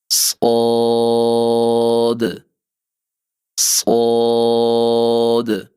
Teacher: سین باریک ادا کیا جاتا ہے جبکہ صاد موٹا ادا کیا جاتا ہے